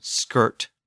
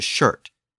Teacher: the Germanic sk sound. As you might remember, that sound shifted to the sh sound in Old English